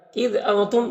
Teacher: نون میں اخفاء ہوگا، میم میں اظہار شفوی ہو رہا ہے